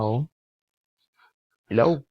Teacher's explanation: La forma de los labios es donde los fonemas vocálicos pueden ser labializados o no labializados. Labializados. Se pronuncian redondeando los labios. Son la O y la U.